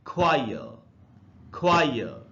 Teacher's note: British English में last वाले आर का उच्चारण नहीं होता